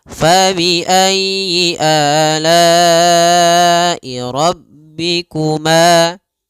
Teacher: pada lafal ma ada mad th'i panjangnya dua harakat